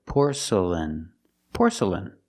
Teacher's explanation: Put the stress on the first syllable.